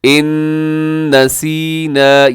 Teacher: ربنا، آگے لا تؤاخذنا، تؤاخذنا، یہاں اس کے اوپر بھی مد ہے اور مد منفصل۔ ان نسینا، یہاں نون ساکن کے بعد نون ہے، یہاں ادغام ہوگا غنے کے ساتھ